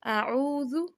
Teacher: واو مدہ میں سے ہے، حروف مدہ میں سے ہے، تو اس کو یعنی کہ 2 سیکنڈ لمبا کر کے پڑھنا ہے